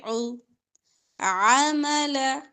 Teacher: عین وسط حلق سے، عمل لمبا نہیں کریں گے